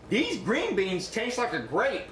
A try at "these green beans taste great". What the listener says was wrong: But no, cut. Not grape. Great.